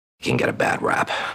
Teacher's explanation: we have a flap T here, connecting the T and get with the word